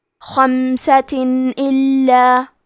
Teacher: ہم تنوین کو ظاہر کریں گے اور بغیر غنہ سے یہ حکم کو ادا کریں گے